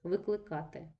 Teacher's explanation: наголос падає на передостанній склад і це дієслово недоконаного виду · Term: зміна наголосу